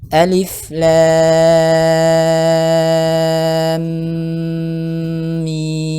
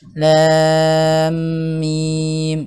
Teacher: Lam panjangkan 6 harokat, kemudian ditahan dulu, jangan buru-buru karena mim tasydid di situ